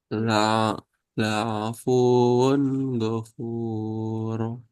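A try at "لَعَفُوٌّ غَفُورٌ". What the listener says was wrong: Di nabar ya, wawu tasdid. La'afuwun, la'afuwun, ghafur. Mulai ditekan itu di fu-nya ya. Fu, fu. Nah, untuk menjelaskan tasdid di waw. La'afuwun ghafur.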